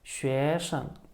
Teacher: You'll notice that the first syllable, 学, has the second tone on it, and then 生 has no tone, 学生.